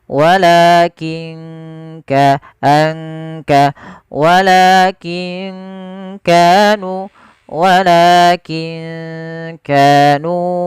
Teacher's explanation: Ada nun sukun bertemu dengan huruf kaf, maka ini juga sama bacaan ikhfa. Cara membacanya samarkan nunnya kepada huruf ikhfa. Ke huruf kaf. Kaf makhrajnya dari pangkal tenggorokan kita.